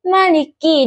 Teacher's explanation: Kata Maliki huruf mim makhrajnya itu di bibir. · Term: huruf lam